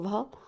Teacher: ओष्ठ महाप्राण घोष व्यंजन वर्ण का उदाहरण है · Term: ओष्ठय महाप्राण घोष व्यंजन